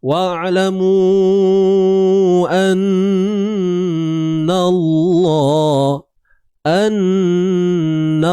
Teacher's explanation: Wajibul gunnah. Wajib dengung. Kadarnya 2 harakat ya.